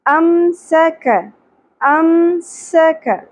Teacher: سین، سیٹی کی آواز آئے گی اور کاف باریک ادا ہوگا